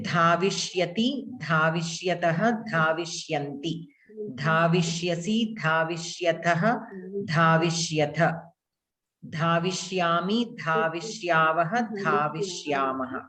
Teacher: Dakara should be Mahaprana. You are pronouncing Alpa Prana.